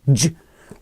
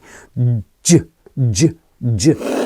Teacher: Middle where as with the J sound the J sound actually the front of the tongue is close to the top and then it's stopping the air going through at the start